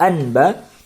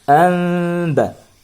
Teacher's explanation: bunyi nun mati berubah menjadi mim mati yang ringan. Tidak lagi dibaca anba, tetapi dibaca amba.